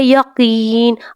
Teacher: قاف کو موٹا ادا کرنا ہے اور قاف کو تھوڑا سا لمبا کر کے بھی پڑھنا ہے کیونکہ یا ساکن ہے، اس سے پہلے کیا ہے زیر.